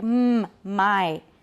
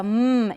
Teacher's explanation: the two lips are together right upper lip and lower lip are together to make my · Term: bilabial nasal stop